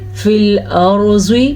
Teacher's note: را کو بھی ہم نے پر پڑھا اور زواد کو بھی ہم نے پر پڑھا۔ پر پڑھنے کا مطلب ہوتا ہے کسی بھی حرف کو موٹا کر کے پڑھنا۔